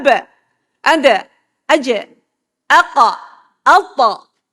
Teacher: Itu huruf-huruf yang berdetak. Bila dimatikan dia berdetak. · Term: huruf qalqalah